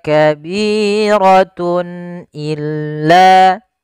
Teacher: Kemudian pada lafal tun illa di sini ada izhar halqi yaitu suara tanwinnya harus dibaca dengan jelas karena ketemu dengan huruf hamzah